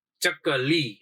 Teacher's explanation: લી ઉપર થોડું વધારે લાંબુ ઉચ્ચારણ થાય છે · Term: ગુરુ સ્વરો